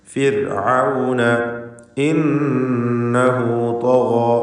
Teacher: ഫിർഔൻ ഈ പദത്തിലെ റായിന് തർക്കീഖാണ്. സുക്കൂനുള്ള റാവും തൊട്ടു മുമ്പിൽ സ്ഥിരപ്പെട്ട കസ്റും ഉണ്ട് എന്ന കാരണത്താൽ ഫിർ എന്ന് നേർപ്പിച്ച് റാവ് ഉച്ചരിക്കുക.